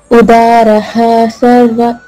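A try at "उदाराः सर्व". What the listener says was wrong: ఉదారా దీర్ఘం ఫస్ట్ ఇవ్వాలి.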